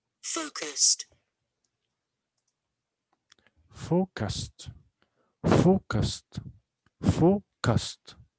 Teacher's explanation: Again, we have two syllables here. It's a short adjective. And the stress is on the first syllable.